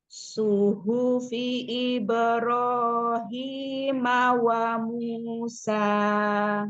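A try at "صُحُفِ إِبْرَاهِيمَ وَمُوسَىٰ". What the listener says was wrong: Coba angkat lagi pangkal lidahnya. ha kecil. Ro-nya, matobi'inya selesaikan. Jadi matobi'inya 2 harokatnya itu selesaikan. Jangan nanggung-nanggung ya. Nah, jangan kepanjangan, jangan juga kependekan ya. 1 ayunan suara.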